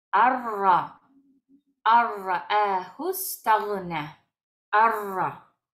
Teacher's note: no vamos a pronunciar esta nun, sino que vamos directo a la ra y la leemos dos veces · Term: idgham sin gunna